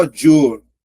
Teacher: Veja que a letra O é mais forte, ó. A letra I é uma semivogal, tá vendo? Então, eu tenho ditongo crescente oral.